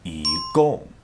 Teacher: when it comes before a fourth tone character e's tone will change to a second tone